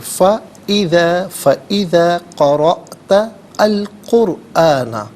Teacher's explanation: قرأت میں حمزہ ساکن ہے، اسے جھٹکے کے ساتھ پڑھا جائے گا. را پر زبر ہے، را کو پر کر کے پڑھیں گے.